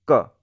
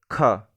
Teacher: क में क्या है उतना ज्यादा एयर नहीं निकल रहा है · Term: अल्पप्राण